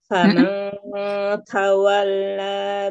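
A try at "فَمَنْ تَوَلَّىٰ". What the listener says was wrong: Ikhfanya tipiskan lagi, jangan famang dari depan. Tak mana makhraj huruf tak. Dari depan kan? Famanta, famanta dari depan, dari huruf tak. Ke depan lagi. Faman, man, beda nggak? mang beda ya. kan ikhfa itu kita siap-siap ke setelah huruf nun sukun atau tanwin ya.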